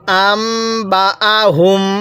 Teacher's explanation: মিম সাকিনের পরে বা থাকলে সেখানে গুনাহ করে পড়তে হয়